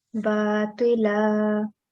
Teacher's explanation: make sure you are prolonging for 2 seconds this la